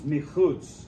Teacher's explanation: Min chutz becomes michutz. The noon is assimilated with virtual doubling.